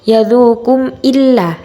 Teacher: mim sukun dalam bacaan tersebut harus disuarakan dengan terang dan jelas tanpa berdengung di bibir dengan mulut tertutup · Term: idhar syafawi